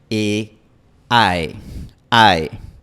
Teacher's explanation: En inglés, el diptongo termina con una posición un poco menos frontal y un poco menos arriba. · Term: diptongo inglés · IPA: /aɪ/